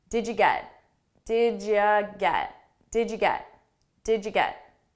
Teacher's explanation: when we have these side by side it's pronounced as a ja